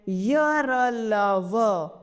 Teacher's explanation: अब है अंतस्थ व्यंजन। इन व्यंजनों के उच्चारण में जिह्वा का पूरा स्पर्श मुख के किसी विशेष भाग के साथ नहीं होता।